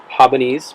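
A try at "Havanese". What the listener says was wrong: Habanese. You said haba. You keep saying haba. Habanese. Because they're from Havana.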